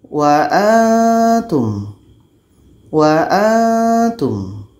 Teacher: ketika sebut huruf nun, kita sudah merasakan huruf ta. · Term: ikhfa hakiki